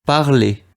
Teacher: we will not pronounce the R at the end. It's just going to sound like A at the end. parler, Not something like parler or something like that.